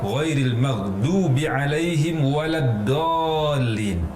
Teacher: Waladdallin, dhad berubah menjadi huruf dal